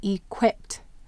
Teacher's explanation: Where will the accent be? Equipped. That's right. It's on the quip.